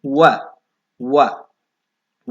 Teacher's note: ದಂತ ಮತ್ತು ಓಷ್ಠ ತುತಿಗಳ ಸಹಾಯದಿಂದ ಬರ್ತಕ್ಕಂತಹ ಅಕ್ಷರ ಕೇವಲ ಇದು ಒಂದೇ ಇದೆ ಇದು ವ ವ ಎನ್ನುವುದು ದಂತೋಷ್ಠ ಅಕ್ಷರಗಳಿಗೆ ಉದಾಹರಣೆ